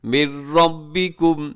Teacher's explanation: نون کی آواز بالکل ختم ہو جائے گی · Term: ادغام